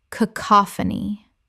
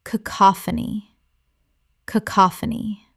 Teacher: cacophony Correct pronunciation. cacophony Four syllables with a stress on the second.